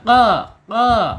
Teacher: qo ya agak sedikit diceklikkan ya karena dia ee pangkal lidah. di pangkal beda. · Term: qop